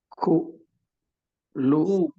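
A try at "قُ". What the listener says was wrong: Jangan ada udara ketika kof. Jangan ada udara yang mengalir.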